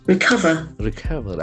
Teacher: So there are two syllables. Recover. Accent falls on the second syllable.